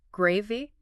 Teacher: With a rising intonation. It sounds like a genuine question.